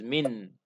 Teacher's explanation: If we stop, it becomes min. So this noon is applied, no cancellation. Because we said idgham happens only if we make wasl.